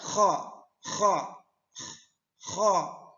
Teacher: Kita lanjut huruf kha. itu ada di tenggorokan, di tenggorokan bagian luar